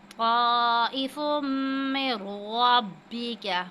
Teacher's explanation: تنوین کے بعد میم سے ہے تو یہاں پہ ہم حروف یرملون میں سے ہے تو ادغام کی صورت میں غنہ کریں گے